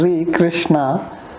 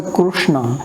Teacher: So now this Ri, here in North India we pronounce it as Ri, Krishna, and then in some places like Gujarat, Maharashtra, etc., also Andhra, they pronounce it as Ru. So they will say Krishna.